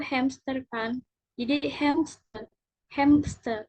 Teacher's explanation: Jadi M sama S-nya tuh kayak seolah jadi P gitu loh.